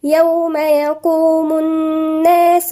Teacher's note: في حرف غنة مشدد عند الناس مقدار حركتين